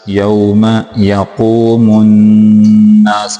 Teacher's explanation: میم کو نون کے ساتھ ملائیں گے، قاف کو موٹا کر کے پڑھیں گے